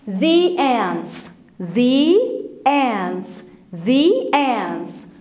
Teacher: لما تشوف كلمة بتبدأ بvowel sound جت بعد الذا مش هننطقها ذا، لكن هننطقها ذي